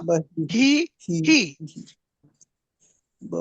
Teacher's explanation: विसर्ग जो असतो त्याचा उच्चार अलीकडचा जो स्वर असतो त्यासारखाच होतो. हो, इथं बही मध्ये ई होतो, त्यामुळे विसर्गातला जो ह आहे त्याचाही हो.